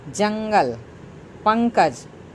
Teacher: आप उच्चारण करेंगे तो लगेगा कि नाक से हवा निकल गई है